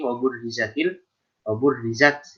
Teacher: Ini roknya rok tipis ya. Kenapa roknya tipis? Karena roknya berharokat kasroh. Jadi itibarnya patokannya bukan huruf sebelumnya.